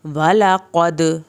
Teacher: قاف کو پر کرے، دال کا کلکلا کرنا ہے